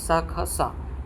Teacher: अघोष जिसमें कोई गूंज नहीं होती है